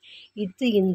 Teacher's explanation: மெய்களும் மேல்வாய் பல்லின் அடியை நாக்கின் நுனி பொருந்துவதால் பிறக்கின்றன